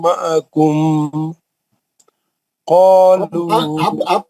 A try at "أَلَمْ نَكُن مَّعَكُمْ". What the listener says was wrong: آپ پڑھ سکتے ہیں نا الم نکم معکم. آپ کیوں کھینچ رہے میم کو؟ یہ معکم پکڑ لو میرے ہوٹوں کو پکڑ لو وہی. تین چار غلطیاں ہیں. نہیں چار غلطیاں ہیں. آپ ایک تو رک رہے نہیں اظہار پہ اور جہاں غنہ کرنا ہے وہاں نہیں کر رہے.